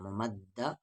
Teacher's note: اب یہاں پر غنہ ہوگا، میم مشدد اس لیے، میم پر پیش مو، ما کو دام مد، دال پہ زبر دا، ممد، اور اس دا کو ہاں میں ملا دیں گے، دا ممددہ.